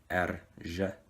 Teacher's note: But its letter name is erž. It's kind of a rolled R plus jet